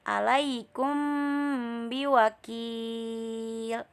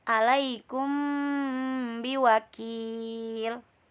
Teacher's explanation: Nah, kita di sini wajib menyembunyikan mim sukun di antara bunyi huruf ba. Didengungnya sepanjang 2 harokat dalam keadaan bibir tertutup. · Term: ikhfa syafawi